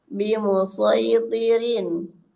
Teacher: menyesuaikan sifat itbaq dengan huruf sesudahnya, yaitu huruf to yang mempunyai sifat isti'la